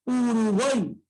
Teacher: Al centro la vocal abierta A. Y a los costados, cerradas. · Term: triptongo